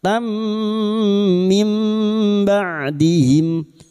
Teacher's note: Masuk pada huruf mim dan mendengung selama tiga harakat. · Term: idgam bighunah